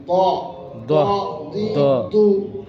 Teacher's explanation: দদের উচ্চারণটা হলো জিহ্বার গোড়ার কিনারা, ডান কিংবা বাম, উপরের দাঁতের মাড়ির সাথে লাগিয়ে উচ্চারিত হবে, মোটা করে উচ্চারিত হবে।